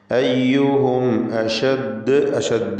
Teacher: അയ്യുഹും അഷദ് എന്ന് വഖഫ് ചെയ്യുമ്പോൾ ഖൽഖല കുബ്രയാണ്